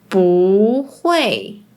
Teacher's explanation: when it’s combined with another fourth tone, it becomes the second tone, which is the rising tone